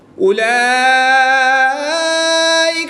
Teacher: کھڑی زبر کے بعد حمزہ اسی کلمے میں ہے تو یہاں پر مد متصل ہوگی، 2 سے 3 الف تک کھینچ کر پڑھیں گے۔